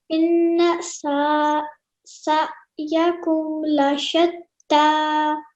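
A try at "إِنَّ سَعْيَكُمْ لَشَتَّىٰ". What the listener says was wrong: Excellent, perfect.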